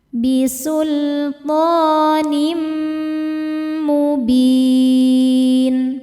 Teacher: Bisultonim tho hukumnya mad thobi'i muqaddar karena ada baris fathah tegak di atas huruf th dibacanya panjang dua harakat bisultonim berikutnya ada idgham bighunah karena ada tanwin kasrah menghadapi huruf mim. Cara bacanya tanwinnya masukkan ke mim kemudian dengungkan. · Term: idgham bi gunnah